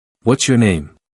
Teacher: My intonation doesn't rise at the end the way it did with the earlier examples. In fact, you might even hear a slight downward drop.